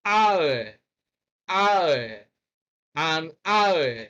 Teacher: What we have in hour is a diphthong beginning with a diphthong ow. Then we add the schwa sound, and that gives us hour